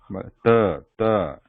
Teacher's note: I put the tip at the back of the front teeth. I touch it there, ta, and then I pronounce the sound, ta. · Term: ta sound